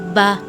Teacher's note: با ہونٹوں کے اندرونی یعنی کہ گیلے حصے کے ملنے سے ادا ہوتا ہے